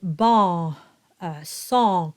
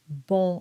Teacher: so they'll say ba song but it doesn't sound French so you really want to aim for the closed o that you nasalized